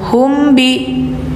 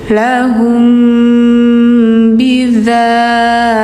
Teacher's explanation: Karena ini ikhfa syafawi hukumnya. Jadi harus didengung dulu.